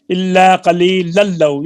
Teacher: یہ تنوین کا لام میں ادغام ہوا ہے